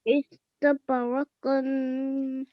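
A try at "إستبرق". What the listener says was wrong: Excellent. Well done.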